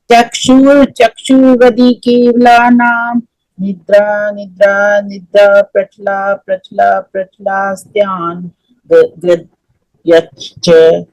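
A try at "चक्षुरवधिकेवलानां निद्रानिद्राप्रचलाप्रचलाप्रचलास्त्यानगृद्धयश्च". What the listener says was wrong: देखो, ये पढ़ते समय 3 निद्रा है, यहाँ 3 शब्द है ना, यहाँ पे डैश है। एक निद्रा को सिंगल बोलो निद्रा, और दूसरे 2 जो है उसको एक साथ बोलो निद्रा निद्रा।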